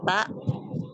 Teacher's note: Ta ujung lidah menyentuh gigi seri bagian atas ya. Ta ya. Tempat tumbuh gigi seri atas ya. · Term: huruf ta